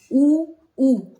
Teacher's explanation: जो हमारे होठ हैं उनकी जो है थोड़ी गोल आकृति बनती है। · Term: ओष्ठ